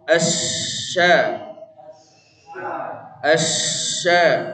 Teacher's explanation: makhrajnya huruf Sya tapi tidak nempel Pak tidak kuat ya ngalir ada keluar anginnya